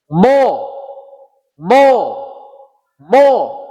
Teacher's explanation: Yang kedua, hurufnya ini pengucapannya hampir sama, bibir juga sama full, pengucapannya bulat, tidak boleh ada desis